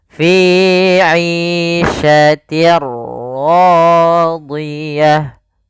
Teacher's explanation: Apa yang dimasukkan adalah suara tanwin. Awalnya fi 'ishatin, ketemu ra, maka langsung masuk di ra-nya, bunyinya langsung ke huruf ra. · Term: idgham bila gunnah